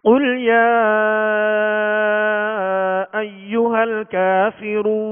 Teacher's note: دو نقطے والا قاف ہے، یہ پر حرف ہے، اس کو پر پڑھیں گے